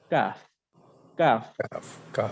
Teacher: জিহ্বার গোড়া থেকে একটু আগে বাড়িয়ে তার বরাবর উপরে তালুর সাথে লাগিয়ে কাফ। অর্থাৎ এর আগেটা আমরা পড়েছিলাম কফ, যেটা গোড়ার অংশ, জিহ্বার গোড়া তার উপরে তালুর সাথে লেগেছিল, কিন্তু এবার জিহ্বার গোড়া থেকে একটু আগে বাড়িয়ে আমরা আমাদের জিহ্বাটাকে তালুর সাথে লাগাবো এবং নরমালি বলবো কাফ কাফ।